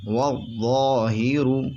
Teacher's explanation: واو ضا زبر وض ضا الف زبر ضا والضا ہا زیر ہی والظاہی را پیش رو والظاہر. را موٹا ہوگا کیونکہ را پر پیش ہے. را پر زبر ہو یا را پر پیش ہو تو را موٹا ہوتا ہے.